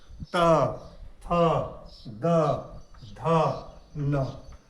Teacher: त वर्ग, त वर्ग का उच्चारण स्थान दंत से होता है। त जीभ दांत, निचले दांत के अंदरूनी भाग को स्पर्श जो है करता है। त, थ, द, ध, न, तो ये दंत से उच्चारित होने वाला त, थ, द, ध, न यानी त वर्ग।